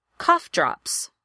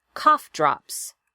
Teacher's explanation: Cough drops. Another compound word, equal stress.